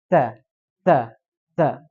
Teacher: Ta itu tidak baca ta, tapi ada desisan. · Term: hams